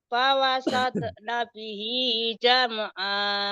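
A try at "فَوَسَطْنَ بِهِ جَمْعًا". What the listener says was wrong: pokoknya kalau bukan pawasat tapi pawasal tok tok. Fawasal tok. Fawasal tok iya. Jangan dicicil. Jangan pawasal tok, jangan pawasal tok. Pawasal tok jangan dicicil. Fawasatna bihi jam'a.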